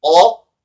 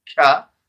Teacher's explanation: one is towards the throat is qaf, nearer to the throat, and kaf is nearer to the mouth.